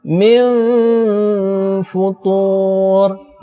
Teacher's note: bunyinya berubah menjadi seperti huruf mim, ataupun kalau di dalam huruf abjad itu seperti bunyi huruf m, tetapi mulut tidak ditutup rapat, sehingga masih ada celah udara yang bisa keluar melalui bibir. Contohnya, min futur, nun mati berjumpa dengan huruf fa, bibirnya jangan ditutup terlalu rapat. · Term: ikhfa awsad